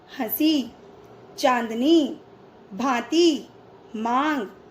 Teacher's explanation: इसका उच्चारण करते समय हवा नाक और मुख से समान दबाव के साथ बाहर निकलती है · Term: अनुनासिक